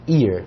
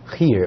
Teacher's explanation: o espírito áspero, ele dá um começo um pouco mais aspirado, como se a gente tivesse um Hzinho na frente. Veja só, no inglês nós temos a pronúncia de palavras que começam com H sendo aspiradas.